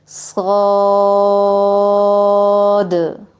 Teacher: صاد، اس کا مخرج زا اور سین والا، اور اس کی ادائیگی طوالت کے ساتھ لمبی، اور زبان کو جڑ سے اٹھانا، کیونکہ یہ پر بھی ہے، موٹا بھی ہے، اس کے میں سیٹی بھی ہے، سختی بھی ہے، اور پھر آخر میں دال پر کلکلا